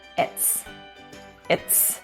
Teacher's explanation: In some cases, we will be dropping actual sounds. We're dropping the vowel in is, smushing them together, or linking, and we're going to say it's. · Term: contraction